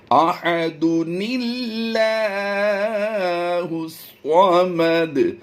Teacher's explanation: دو پیش کی تنوین کو یہاں پر ہم نے، یاد رکھیے دو پیش کی تنوین کو ہم نے یہاں پر جب پڑھا تھا وصل میں، تو ایک پیش کو پڑھتے ہوئے ہم نے ایک پیش کو سائلنٹ کیا اور نون کے ساتھ زیر دی اور اسے آگے ملا دیا